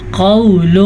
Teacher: قول، قاف زبر و قو، واو ساکن سے پہلے زبر ہو تو یہ واولین ہوتا ہے، نرمی سے پڑھا جاتا ہے، کھینچ کے نہیں پڑھا جاتا. اگر ہم اس کو کھینچنے کی غلطی کریں گے تو یہ مدہ والا کام ہو جائے گا، جبکہ یہ واو لین ہے، لین کا مطلب ہے نرمی سے پڑھنا.